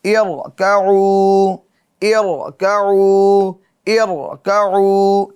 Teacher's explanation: را ساکن سے پہلے جو زیر ہو، زیر عارضی ہو، تو اس کو کیا کریں گے؟ پر یعنی موٹا پڑھیں گے · را کو کیا کریں گے؟ پر یعنی موٹا پڑھیں گے، کیونکہ را ساکن سے پہلے جو زیر ہیں وہ کون سی زیر ہے؟ زیر عارضی ہے